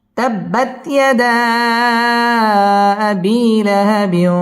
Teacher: তাব্বা বা তাসদীদ ওয়ালা হরফ, তাব্বাত ইয়াদা মধ্যে মুনফাসিল 3 আলিফ টান দিয়ে পড়তে হবে। ইয়াদা আবি জেরের বাম পাশে জজম আলাইয়া মদের হরফ 1 আলিফ টেনে পড়তে হবে।